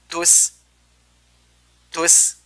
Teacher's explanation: Di situ ada huruf taknya berharokat dhammah maka dimonyongkan, kemudian sin, huruf sin ada huruf tipis maka setelah monyong dia tersenyum. Tus. Karena kalau tidak tersenyum maka dia akan menjadi huruf shad.